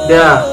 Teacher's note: Makhrajul huruf dal terletak pada punggung ujung lidah dan pangkal dua gigi seri muka bagian atas.